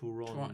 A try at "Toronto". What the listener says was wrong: No, the second T. There's a second, It's not Toronto. Toronto. Toronto.